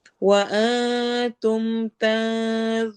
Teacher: دونوں جگہ پہ نون کی آواز کو ہم چھپائیں گے اور یہاں پر اخفا ہوگا